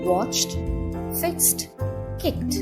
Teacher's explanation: a t sound at the end for example watched fixed kicked so instead of having the D sound at the end we have a t sound